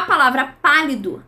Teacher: A palavra pálido, a maior intensidade vai estar em pá. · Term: sílaba tônica